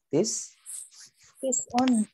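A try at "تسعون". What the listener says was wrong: nah betul tis'un panjangin ya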